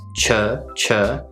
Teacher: the ch sound followed by the schwa sound coming across more like the uh sound in words like foot or put